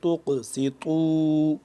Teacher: قاف ساکن ہو رہا ہے تو اس کے اوپر قلقلہ کریں گے، سین کو سختی سے سیٹی کی آواز اور قا کو بھی موٹا کر کے پڑھیں گے، قا پیش